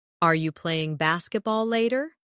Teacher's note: In fast speech, are you can sound like are ya